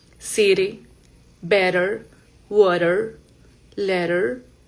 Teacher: el sonido de la T entre dos vocales va a sonar como una R.